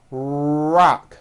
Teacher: notice how my lips are coming forward and my tongue moves back in my mouth and I push out the R sound. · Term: American R sound